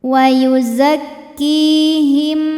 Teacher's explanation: hukum izhar syafawi karena mim sukun menghadapi huruf selain mim dan ba yaitu huruf wau cara bacanya mim sukun dibaca jelas